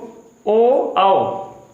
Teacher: तो इसमें कंठ का भी यूज है और ओष्ठ का भी यूज है, इसलिए इन्हें बोलते हैं कंठोष्य।